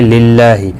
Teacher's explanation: اللہ کا لام زیر کی وجہ سے باریک پڑھا جائے گا